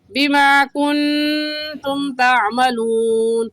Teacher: اور قاعدہ ہے کہ نون ساکن یا تنوین کے بعد حروف ہلکی میں سے کوئی حرف آ جائے تو غنہ نہیں ہوگا، اور اگر نہ ہو تو غنہ ہوگا. تو یہاں پر نون ساکن کے بعد حروف ہلکی میں سے کوئی لفظ نہیں ہے، اس وجہ سے اس نون ساکن پر ہم غنہ کریں گے